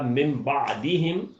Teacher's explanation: اگلا حرف بے آنے کی وجہ سے یہ نون تبدیل ہو گیا ہے میم میں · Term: اقلاب